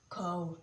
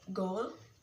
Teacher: The vowel in cow and goal both begin at a given place and glide toward another one. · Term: diphthong